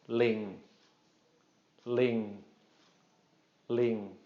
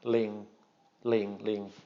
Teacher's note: you probably notice I'm not drawing that out just a short mid-tone